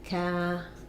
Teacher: In cafe, we have second syllable stress. We have the a black cat vowel, so you can think about cat, cafe.